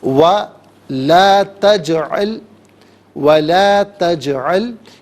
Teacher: جیم ساکن ہے لیکن جیم حرف قلقلہ ہے تو آواز لوٹتی بھی محسوس ہونی چاہیے